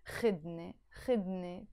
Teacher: So you don't pronounce it خود ne anymore, because you added the ne here. You drop the u sound and it becomes خدني